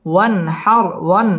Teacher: ওয়ান হার ওয়ান এটা হচ্ছে ইজহার, নুন সাকিনের বামে হা আসছে, হা ইজহারের হরফ, গুন্না ছাড়া স্পষ্ট করে পড়তে হবে। ওয়ান হার র পুর হবে এবং রয়ের মধ্যে ওয়াকফ করতে হবে।